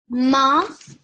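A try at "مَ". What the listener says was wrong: you pronounced the meme a bit longer. It sounded like you made it a bit longer. So it was ma. It sounded ever so slightly prolonged.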